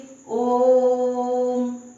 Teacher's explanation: इसको बोलने में 3 मात्राओं का या त्रिमात्रिक इसीलिए ही से कहा जाता है। इनसे ज्यादा समय लगे इसमें, इसे प्लुत स्वर कहते हैं